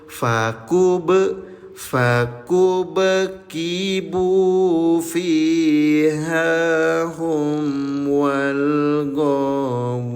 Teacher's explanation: Cara bacanya nol harakat PTL. PTL itu pantulkan. Jadi bacanya mantul. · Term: qalqalah